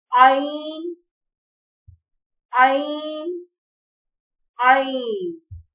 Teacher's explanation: عین حلق کے درمیانی حصے سے ادا ہوتا ہے، اس کی ادائیگی تھوڑی سی مشکل ہے۔